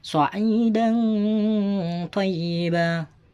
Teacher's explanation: Harus dibaca dengung serta samar.